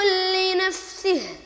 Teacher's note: تظهر الهمس عفوا في الفاء اكثر من اظهارك للهمس في السين لان السين هنا مكسوره وكما نعلم ان صفه الهمس هي من